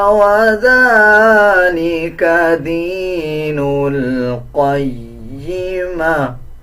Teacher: اس میں لام کو 1 سیکنڈ لمبا کر کے پڑھا جائے گا، اور یہ جو آگے واو ہے اس کو سکپ کر دیا جائے گا۔ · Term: کھڑا زبر